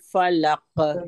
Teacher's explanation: جب قاف کے اوپر جزم آتا ہے تو دوہری آواز آتی ہے اس کو ایسے ڈبل ساؤنڈ کے ساتھ پڑھا جاتا ہے ٹھیک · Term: قلقلہ